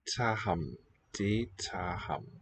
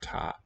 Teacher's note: The single voiceless stop has weakened first to a g and now really dropped.